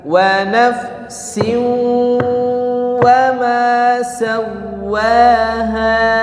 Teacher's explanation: Oke, di situ ada tanwin kasrotain, ya, nafsin bertemu dengan huruf waw, ya, maka ada hukum idgham bi gunnah. Masuk ke dalam huruf waw, tanwin itu disertai dengan gunnah. Kalau ada gunnah berarti harus ditahan dulu. Wa nafsin, ya, alirkan suaranya ke hidung, jangan hanya di mulut.